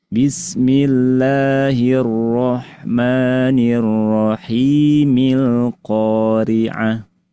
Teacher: ketika disambung bismillah dengan ayat 1 alqariah, maka alifnya jadi hilang. Kalau berhenti alqoriah kalau disambung milqoriah. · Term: alif wasal